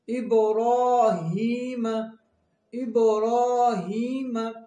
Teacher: را کے اوپر کھڑا زبر، اس کو ہم 2 سیکنڈ کے لیے کھینچیں گے